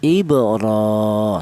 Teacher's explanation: Ini menunjukkan bahwa huruf ro tersebut dibaca panjang, yaitu 1 alif atau 2 harokat atau 2 ketukan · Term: matobi'i